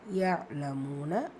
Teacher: மால வந்து அலிஃப் மத்தா இரண்டு ஹரக்கத் அளவு நீட்டம் கொடுத்து விடணும்